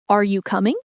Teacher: if you ask a yes or no question like, Are you coming? your voice rises at the end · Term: intonation